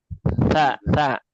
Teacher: Antara dua ujung lidah dengan ujung gigi seri atas